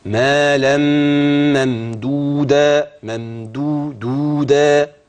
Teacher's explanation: لما بتقف بتبدل التنوين بالفتح الفا عند الوقف